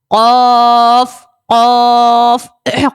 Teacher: قاف کو ہم نے موٹا پڑھنا ہے کیونکہ قاف بھی حروف مستعلیہ کا ہے